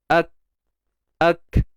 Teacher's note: Huruf kaf makhrajnya di mana? Pangkal lidah. Ak. Cuba matikan huruf kaf, maka kita akan rasa pangkal lidah kita akan naik ke lelangit yang berdaging belah belakang tu.